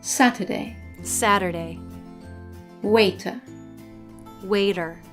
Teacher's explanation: in American English when the letter T is in the middle position in a word it sometimes changes to a soft D this happens either when it's between two vowels or when it's